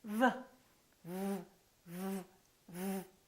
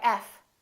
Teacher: V is a voiced sound and F is voiceless. Other than that, the V and the F are exactly the same.